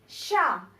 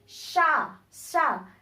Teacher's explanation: इनके उच्चारण में सीटी या फुसफुसाहट की ध्वनि सुनाई देती है तथा उच्चारण के समय एक प्रकार की ऊष्मा उत्पन्न होती है। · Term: ऊष्म व्यंजन